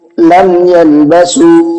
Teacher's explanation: میم کے بعد میں یا آیا تو ہم نے کیا کیا، میم کی آواز کو ظاہر کر کے پڑھا، لم اس طرح سے نہیں پڑھا، لم یلبسو۔